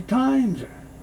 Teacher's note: The S moves over, so you hear times are. The R is very soft.